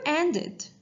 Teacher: the ed ending, sounds like it sound because the verb end ends in d sound